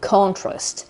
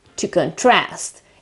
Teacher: Contrast is a noun, okay, while to contrast is a verb. Obviously, in the first case, it's a noun and the accent is at the very beginning of the word, so the stress is on the first syllable, on the O, contrast.